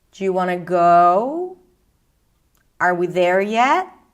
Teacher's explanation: So at the end, there is a quite nice rise up.